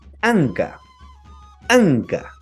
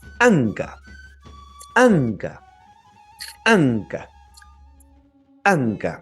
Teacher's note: pronunciación de la k de la k pero que está apóstrofada estamos hablando de una oclusiva reforzada